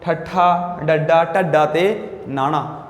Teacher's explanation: जीभ का अगला हिस्सा नोक वाला उल्टा होके कोमल तालू नूं छूंदा है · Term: उल्ट जीभी अखर